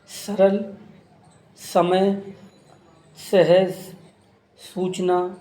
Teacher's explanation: स दंत, इसमें हमारी जीवा दांतों के निचले भाग को स्पर्श करती है